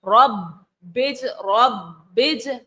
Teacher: با جو ہے حروف کلکلہ تو ہے لیکن اس کے اوپر تشدید ہے، اس لیے ہم جماؤں کے ساتھ پڑھیں گے